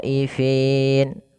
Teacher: maka khonya wajib dipanjangkan 4 harokat atau 5 harokat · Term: mad wajib muttasil